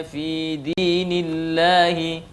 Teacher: lafadz Allah bila didahului oleh harakat kasrah maka dia harus dibaca dengan tipis